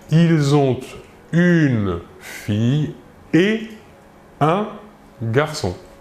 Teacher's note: la liaison avec la conjonction et est interdite nous dirons donc ils ont une fille et un garçon voilà